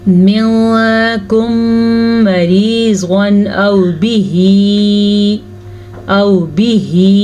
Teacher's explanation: تنوین کے بعد حمزہ ہے حروف حلقی میں سے، تو ہم تنوین کو ظاہر کر کے پڑھیں گے